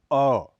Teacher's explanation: स्वरों में मात्रा की दृष्टि से यह ह्रस्व माना जाता है। इस स्वर का उच्चारण करते समय जीभ का मध्य भाग कुछ ऊपर की ओर उठ जाता है